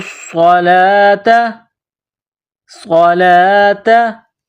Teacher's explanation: लाम के ऊपर कड़ा जबर है एक अलिफ के बराबर खींचना है · صاد میں سیٹی کی آواز پیدا کرنی ہے ، صاد کو موٹا کرنا ہے، وَأَقِيمُوا الصَّلَاةَ، صَلَاةَ، لام کے